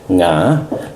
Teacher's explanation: No, their inability to say my name, to pronounce it properly, to marshal their entire vocal apparatus, tongue, mouth, nose, palate, glottis, windpipe, so that they might emit that little sound, nga, 2 consonants, 1 vowel, a rising tone peculiar to Thai